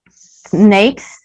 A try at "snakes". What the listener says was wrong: I didn't hear the S sound. Let's do the S sound. You do not pause between the S sound and the N. You start with the S and then your tongue, you just roll it onto the N and you keep going. Snakes.